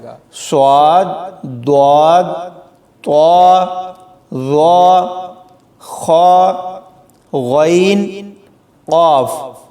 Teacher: یعنی ان کو پڑھتے ہوئے آواز کو موٹا کیا جائے گا، ان کو باریک نہیں پڑھنا